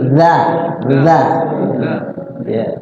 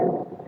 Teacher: Nah huruf zal itu ya kuncinya adalah lidah kita keluar ya, sedikit keluar dan tergigit oleh gigi kita.